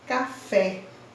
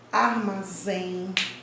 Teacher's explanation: oxítona, são aquelas onde a sílaba tônica se encontra na última posição. Exemplo, café.